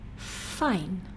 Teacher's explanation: with the edge of the top teeth touching the inside of the lower lip